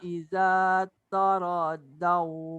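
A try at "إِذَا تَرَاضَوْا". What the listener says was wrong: Iza taro, jangan toro.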